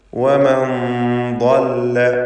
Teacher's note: ശേഷം ഇസ്തിഅലാഇൻ്റെ തഫ്ഖീം ചെയ്ത് ഉച്ചരിക്കുന്ന ضادാണ് എന്നതുകൊണ്ടാണ് നൂനിൻ്റെ മണിക്കലിലും തഫ്ഖീം വേണ്ടി വരുന്നത്. വമൻ ضل ضادന് പൂർണ്ണമായ തഫ്ഖീം കൊടുക്കുക. നാവിൻ്റെ സൈഡിൽ നീളത്തിലാണ് അതിൻ്റെ മഖ്റജ്. ഇസ്തിതാല എന്നത് അതിൻ്റെ പ്രത്യേകമായ സിഫത്തുമാണ്.